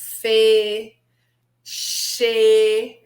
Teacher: Ou as fricativas, olha lá, Fê, Xê, você fecha bem, mas não fecha tudo